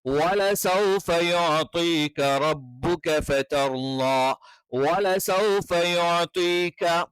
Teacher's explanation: വാന്റെ ഉച്ചാരണം അറിയാലോ, ചുണ്ട് വൃത്താകൃതിയിൽ വെച്ചുകൊണ്ടാണ്